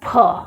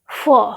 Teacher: लेकिन जब वहीं पर नुक्ता लग जाता है तो क्या हो जाता है, फ। होठ आपस में चिपकने नहीं पाते हैं, बीच से हवा बाहर निकल जाती है।